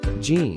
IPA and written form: dʒiːn (gene)